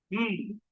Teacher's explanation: There is oral closure. But the air is released through the nasal cavity.